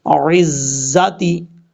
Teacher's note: عین کے بعد جو زا ہے یہ زا سیٹی کے ساتھ پڑھا جاتا ہے